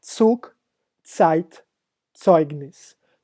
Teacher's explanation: Então, sempre, sempre fale o Z em alemão com esse ts, tset. Como na palavra Zug, Zeit, Zeugnis.